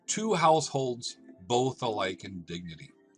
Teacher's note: That is 1 iamb, 2 house. Holds is unstressed, and both is stressed. So now we have 2 iambs. · 2 is unstressed, house is stressed. That is 1 iamb, 2 house. Holds is unstressed, and both is stressed.